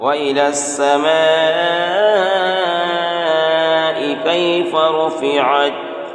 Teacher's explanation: مد متصل ہے اس لیے یہاں پر کھینچ کر 5 الف کے برابر کھینچ کر پڑھیں گے